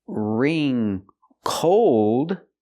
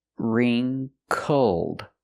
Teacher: We need the short sound uh uh like cup and up for the second syllable.